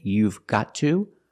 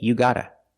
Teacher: You've gotta. But in America, we make this mistake and we don't pronounce the v sound, so we just say you gotta.